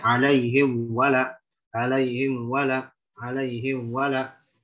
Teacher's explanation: itu namanya mengikhfakan, mensamarkan bunyi mim antara ada atau enggak ada, padahal tidak ada ikhfa di situ